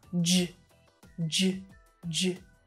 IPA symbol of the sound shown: dʒ